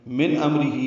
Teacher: من امرہی میں اظہار ہے، نون ساکن کے بعد حمزہ آنے کی وجہ سے. میم ساکن پہ بھی اظہار شفوی ہے، را باریک ہے، ہی کھڑی زیر مد صلہ ہے.